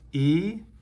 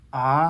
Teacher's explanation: e has a low F1 ah has a high F1